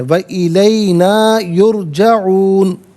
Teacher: व इलैना ना को जरा खींच के पढ़ना है